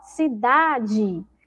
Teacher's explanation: Mas se essa sílaba que tem o som de I for uma sílaba fraca, nós escrevemos com E. Então, na palavra cidade, a sílaba mais forte é o da